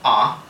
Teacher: the father vowel, so ah, which is a back vowel, meaning that it's articulated in the back of the mouth